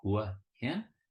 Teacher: think of Hua Hin, with rising tones at the end